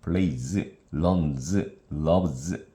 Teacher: 모음 또는 유성음 뒤에 S는 Z 소리를 냅니다.